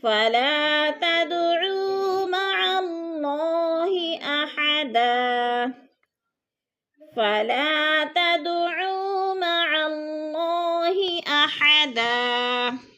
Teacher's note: دال ساکن ہے اور حروف قلقلہ میں سے ہے، تو اس کو ہلا کر پڑھیں گے